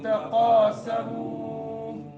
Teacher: قالوا قاف پر پڑھنا ہے اور لو میں مدہ ہوگا، تقا میں مدہ ہوگا، سمو سین باریک سٹی نکالنی ہے